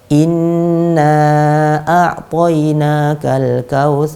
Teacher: harokatnya ini nanti juga channel Hai terpengaruh dengan ritme bacaan kita kalau kita membacanya pakai ritme bacaan yang cepat maka dua harokatnya ini akan memendek dengan sendirinya kemudian kalau kita membacanya agak lambat lebih lambat lagi maka yang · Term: gunnah